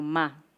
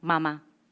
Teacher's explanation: esa posición bilabial, la M, se junta con la A, que es la vocal más abierta. Y entonces se despegan los labios, se saca el aire de los pulmones, se pasa por las cuerdas vocales y tenemos ese asombroso ma.